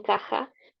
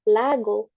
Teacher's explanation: Y, o sea, K, J. La J en caja va a ser un sonido sordo, mientras la G en lago, la G, va a ser un sonido sonoro.